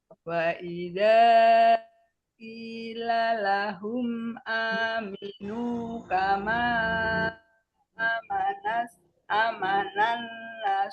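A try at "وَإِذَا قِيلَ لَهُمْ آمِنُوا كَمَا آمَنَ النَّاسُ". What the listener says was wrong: Anya-ya panjang Bu. Ada alif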